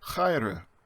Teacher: And remember that he at the beginning is a guttural rough sound like in bach or lach